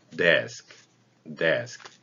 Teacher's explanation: D도 우리말 디귿하고는 좀 다르긴 한데요. 여기도 목젖이 울립니다.